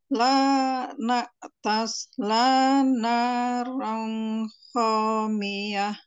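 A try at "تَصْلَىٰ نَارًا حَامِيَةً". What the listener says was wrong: Bu, Hamiyah. Ronnya jelas Bu, ron dibaca ron. Terus polanya diayunkan biar lebih mudah. Tasla naron.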